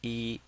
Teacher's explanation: So the first one is number one and is the first tone. E, that's a flat tone.